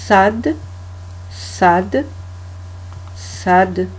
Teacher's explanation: c'est un S emphatique. Alors emphatique, ça veut dire que on recule un peu la racine de la langue, ce qui permet d'ouvrir la cavité buccale et donc là, ça permet au fait de prononcer la lettre.